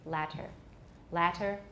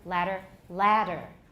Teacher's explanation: with a real d we will lengthen the ah but when we're speaking quickly you really can't hear the difference